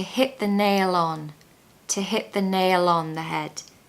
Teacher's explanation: make sure you pronounce the L on the end of nail because it will help you blend into the next word which is on